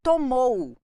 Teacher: decrescente tomou tomou olha o som do o ó tomou to o o funciona como vogal o u como semivogal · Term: ditongo decrescente